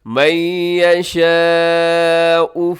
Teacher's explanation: مد متصل جسے مد واجب بھی کہا جاتا ہے، 4-5 سیکنڈ تک اسے لمبا کیجیے گا